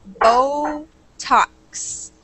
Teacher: A really long O sound there for the first syllable, bo, and then a short O for the second.